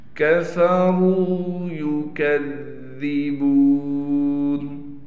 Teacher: را کو موٹا بھی پڑھنا ہے، را کے بعد واو ہونے کی وجہ سے را کو ایک الف کی مقدار کھینچیں گے